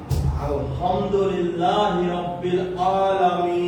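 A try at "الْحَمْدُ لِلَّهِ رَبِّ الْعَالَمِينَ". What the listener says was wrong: বাস, এই যে আপনার একটু খেয়াল করতে হবে, আলহামদুলিল্লাহ না, লিল্লাহ। লিল্লাহ। রাব্বিল না, রব্বিল। রব্বিল আলামিন।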